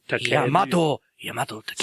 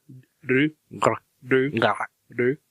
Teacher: the R's happen instead of the back of the mouth, like in English, would be with the tip of the tongue.